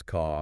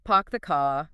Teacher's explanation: they drop the R sound at the ends of words or syllables.